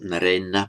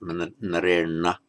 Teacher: So with the characteristic ending ena, nara, becomes narena. Note that the n following a r in the same word becomes retroflex automatically. So not narena, but narena.